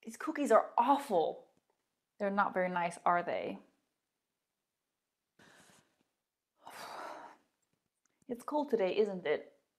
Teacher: you can hear the intonation falling because the information is already clear